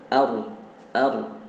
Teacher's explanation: Kalau kita membaca ro dengan ar itu tidak dapat tebalnya ro ya. Kalau makhrajnya ar itu benar ya.